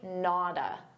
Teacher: we have a t between two vowels. So a native speaker is going to pronounce that as a soft d